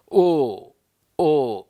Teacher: ಕಂಟೋಷ್ಟ್ಯ ಅಕ್ಷರಗಳು ಕಂಠದಲ್ಲಿ ಹುಟ್ಟಿ ಓಷ್ಠವನ್ನು ಪೂರ್ಣಗೊಳಿಸ್ತವೆ